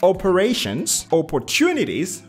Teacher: the third syllable that's where the stress is